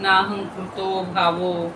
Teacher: अनुस्वाराचा आपल्या विसर्गाचा सगळीकडे ओ झालेला आहे